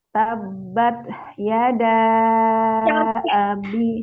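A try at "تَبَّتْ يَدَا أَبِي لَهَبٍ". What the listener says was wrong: Jangan tabbat. Jangan ada bunyi ya. Itu mantul bunyinya. Jadi nggak boleh ada bunyi suaranya ya. Tidak ada karena tertahan aliran suaranya. Tabbat. Tabbat.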